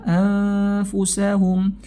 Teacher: nun sukun bertemu dengan fa, maka hukumnya ikhfa hakiki tadi, disamarkan bunyinya ya